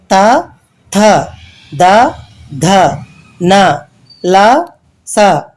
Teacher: దంతాల సాయంతో పలికే అక్షరాలు దంత్యాలు